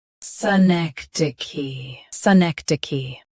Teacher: Both US and UK have the same pronunciation of this word. Stress neck. Keep d soft and finish with key.